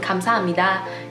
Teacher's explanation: The B sound changes to an M sound because the next sound is an N sound. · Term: nasal assimilation